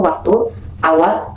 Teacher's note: dengan mendekatkan kedua bibir tanpa menghalang udara yang dihembuskan dari paru-paru